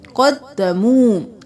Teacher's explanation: قاف موٹا دال پہ تشدید ہے 2 بار